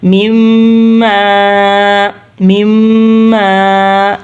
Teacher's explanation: یہ دونوں میم تشدید ہے، یہ دونوں کو ملا کر تھوڑا گننا ہوگا، ناک میں سے آواز نکلے گی مما، اور خالی الف کی وجہ سے دوسرا والا میم لمبا کریں گے۔